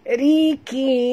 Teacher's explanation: ra baris bawah ra tipis rikin dan bunyikan nun yang kita matikan